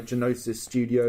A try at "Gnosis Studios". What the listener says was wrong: It's Gnosis. the G is silent.